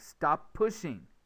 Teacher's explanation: the P may be held a little bit longer but there isn't a gap between the two words you don't say PP in the middle of the words deletion · Only say the consonant once, the space disappears. For instance, stop plus pushing.